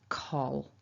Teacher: Now because the l is there at the end of this syllable after the vowel, it might feel like it's happening further back in your mouth, ol, ol. So it's almost like you're swallowing that sound, a dark L